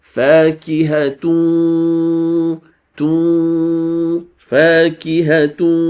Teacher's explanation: That in a full merger disappears. The only thing that is left from that noon sound is a ghunnah.